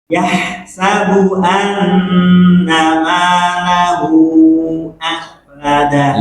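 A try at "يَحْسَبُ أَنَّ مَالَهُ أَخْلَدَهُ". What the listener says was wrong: Iya itu cakep tuh.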